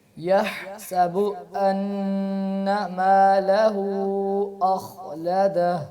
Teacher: غنہ تھوڑا سا اور کریں. ان ناک میں آواز دے جائیں ایک الف کے برابر